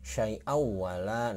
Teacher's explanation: Idgham biguna itu adalah bunyi nun mati atau tanwin apabila bertemu dengan huruf idgham biguna di depannya, maka dibaca bunyi nun mati tersebut akan dengung dan mengikuti huruf yang ada di depannya ya. Nah, jadi bunyi nun mati, ini nun mati atau tanwin, berarti yang ini tanwin apabila ketemu dengan salah satu huruf idgham yang ini yang 4 di depannya ya, dengan tulisan yang terpisah.